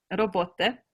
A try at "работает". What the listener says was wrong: Работает. Almost there. It's the ending.